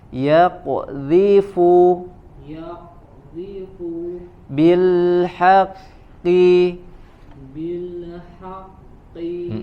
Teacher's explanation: pantulkan huruf qafnya ketika dia sukun